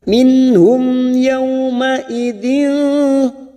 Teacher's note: Mim sukun bertemu ya idhar syafawi dibaca jelas.